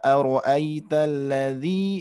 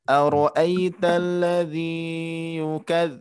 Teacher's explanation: Nah, ladzinya tidak terlalu panjang. Nah, cukup kita ayunkan saja bacaannya.